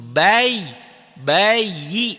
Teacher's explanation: Ini hukumnya dobel aja. Bunyi yanya dua. Satu yanya mati seakan-akan ya mati dan yanya hidup.